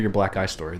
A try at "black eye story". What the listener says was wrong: you guys kind of enunciate better because it sounds like you're saying a black guy story.